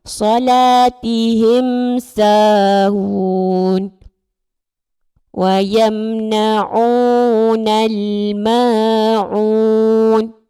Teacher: Bunyi mim disebut dengan jelas tanpa dengun. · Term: izhar syafawi